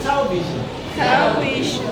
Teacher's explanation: for the sake of today's lessons, we have to stress the first syllable